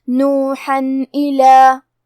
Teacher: الف حروف الاظہار میں سے ہے اور اظہار کا معنی ہے ظاہر کرنا اور تنوین کی اصلیت نون ساکن ہے تو ہم یہاں تنوین ظاہر کریں گے اور اسے نون ساکن پڑھیں گے اور بغیر غنہ سے یہ حکم کو ادا کریں گے